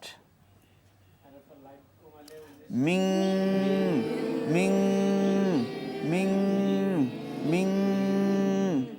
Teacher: গুন্না হবে গুন্না কমপক্ষে এক আলিফ তিন আলিফও টানা যাবে